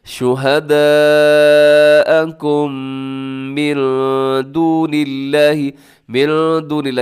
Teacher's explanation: من دون اللہ یہاں پر اخفا ہے، نون ساکن کے بعد دال ہے. اور دون اللہ میں لفظ اللہ کو آپ نے باریک پڑھنا ہے، کیونکہ لفظ اللہ سے پہلے نون کی نیچے زیر ہے، آپ نے اس کو ہرگز لمبا نہیں کرنا، دون اللہ نہیں کرنا بلکہ دون اللہ ایسے کر کے پڑھنا ہے.